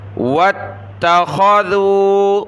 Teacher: واو کو تا کے ساتھ ملایا